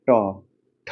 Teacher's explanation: इसका उच्चारण मूर्धा यानी रूट ऑफ माउथ से होता है। जीभ को पीछे की तरफ मोड़कर बोले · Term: मूर्धन्य